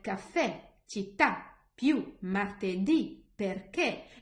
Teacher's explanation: these words have the stress at the very end of it